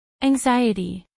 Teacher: a pronunciar en inglés por hablantes nativos anxiety cuatro sílabas anxiety acentuación en la segunda sílaba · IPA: Æŋ'zaɪɪti